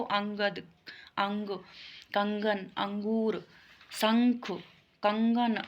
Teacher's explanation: ये स्वर के बाद आने वाला व्यंजन है जिसकी ध्वनियाँ नाक से निकलती है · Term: अनुस्वार